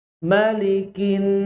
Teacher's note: Kaf, kaf itu keluarkan hamesnya. Hames itu nafas.